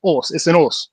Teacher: You gotta drop that H from your word when you're saying it.